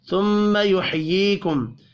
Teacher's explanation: میم ساکن کے بعد سا ہے، اظہار شفی ہوگا، غنہ نہیں کرنا